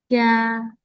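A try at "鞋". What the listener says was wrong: wait, ini X I E, jadi suaranya E, jangan A.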